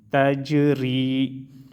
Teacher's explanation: جیم میں قلقلہ اور را کو باریک پڑھیں گے